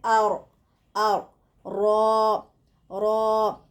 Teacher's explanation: را کو پر پڑھیے. زبان کے کنارے کو اوپر کے سامنے والے 4 دانتوں کے مسوڑوں کے ساتھ لگانے سے نکلتا ہے